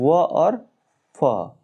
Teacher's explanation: इन वर्णों के उच्चारण में ऊपर के दांत तथा नीचे के होठ का प्रयोग किया जाता है, जैसे व और फ। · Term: दंतोष्ठ